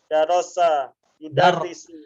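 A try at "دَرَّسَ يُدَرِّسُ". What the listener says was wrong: التشديد في الراء ليس في السين.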